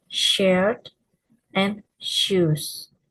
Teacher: Voicing is voiceless, placed in palato alveolar, and manner in fricative.